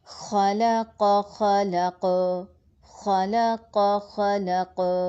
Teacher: لام باریک ہے، قاف پھر موٹا ہے. ان 2 موٹے حروف کے درمیان ایک پتلا حرف پسنا نہیں چاہیے، یا ما قبل اور ما بعد کی وجہ سے موٹا نہیں ہونا چاہیے، بلکہ ہر حرف اپنی تمام تر صفات اور خصوصیات کے ساتھ ساتھ پڑھا جائے گا. · اور قاف ساکن ہونے کی وجہ سے، چونکہ قاف قلقلہ حروف میں سے ہے، اس لیے ہم اس میں قلقلہ کریں گے